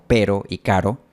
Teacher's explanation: erótica percusiva que está en palabras como Pero y caro y se llama percusiva porque la lengua da una percusión o golpe rápido en la zona alveolar como cuando un baterista golpea la batería con los palillos la